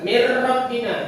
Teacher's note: Jangan didengungkan langsung aja ditasydid. Mir Rabbina, jangan mir Rabbina, jangan ditahan. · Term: Idgham bila guna